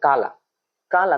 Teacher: काला काला तो बोलते समय ना का पर ज्यादा बल दे रहा है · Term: वर्ण वाला घात